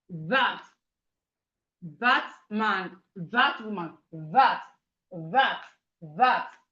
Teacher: When you say that sound, there's vibration in your throat.